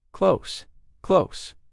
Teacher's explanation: the S sound at the end of the word close should be a Z, a voiced sound Z, and not S